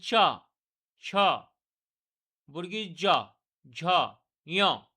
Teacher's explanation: এটা হচ্ছে এই এই পাঁচটিকে নিয়ে এই পাঁচটি ধ্বনি যখন আমরা উচ্চারণ করতে যাব তখন তালু থেকে উচ্চারণ হবে আমাদের তালু যেমন চ ছ বর্গী জ ঝ ই দেখুন তালু থেকে উৎপন্ন হচ্ছে তার জন্য এদের নাম হচ্ছে তালব্য ব্যঞ্জন ধ্বনি · এই 5টি ধ্বনি যখন আমরা উচ্চারণ করতে যাব তখন তালু থেকে উচ্চারণ হবে আমাদের